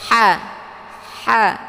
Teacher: Nah, ini huruf ha ini dia memiliki sifat hamas, ya. Jadi tempat keluarnya adalah tenggorokan bagian tengah.